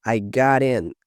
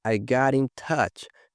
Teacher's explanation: Veja que aqui tem o link do T com o I.